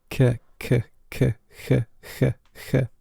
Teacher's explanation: The C has turned into something like a hiss, something that maybe you would hear in German.